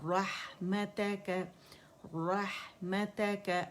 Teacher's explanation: व अस्अलुका रहमतका, रहमतका, रा रा रा और हा, रहमतका, रहमतका, हा बारीक है, रोह रोह करके हमने नहीं हा को मोटा करना